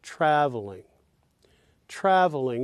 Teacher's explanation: note that in traveling the first syllable of course is stressed trav and then the OL of course weak then what do